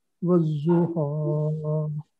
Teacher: والضحیٰ، ذات جو ہے اس کے اوپر شد ہے تو اس لیے اس کو یعنی 2 دفعہ ادا کریں گے، اور جو ہے اس پہ کھڑی زبر ہے جو کہ 2 حرکت کے برابر ہے، تو اس کو لمبا کریں گے